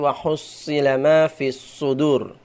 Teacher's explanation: Ah, nanti bedanya sin kecil dengan shad ujungnya sama, akan tetapi ee shad itu pangkal lidahnya naik itu karena dia mempunyai sifat istiala